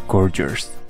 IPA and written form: ˋgɔrdʒəs (gorgeous)